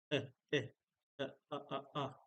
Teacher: the sound is like a gentle coughing a uh that is called a glottal stop or a glottal